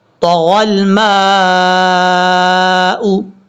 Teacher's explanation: طا حروف مستعلیٰ میں سے پر پڑھا جائے گا. اور یہاں پر میم کے بعد الف الف کے اوپر مد ہے، اس مد کو مد متصل کہتے ہیں اور اس کو 2.5 الف کے برابر لمبا کرنا ہے.